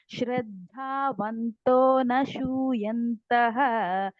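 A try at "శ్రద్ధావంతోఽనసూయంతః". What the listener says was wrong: నసు నశు లాగా వినిపిస్తుంది వాయిస్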